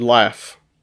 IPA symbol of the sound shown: f